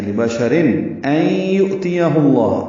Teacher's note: لبشر لام جلدی پڑھیں گے، با شین بھی، اور تنوین کے بعد حمزہ آنے کی وجہ سے رن میں اظہار ہوگا، را باریک ہے